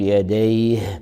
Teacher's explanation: والهاء في حال الوقف الهاء حرف همس ورخاوة، نظهر همسه ورخاوته